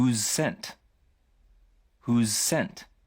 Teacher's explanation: 似た音は2回丁寧に発音しないのでwhosescentのように聞こえるというわけです